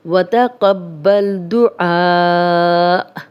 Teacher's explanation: ہم نے وقف کیا ہے تو حمزہ پہ تھوڑا جھٹکے کے ساتھ وقف کریں گے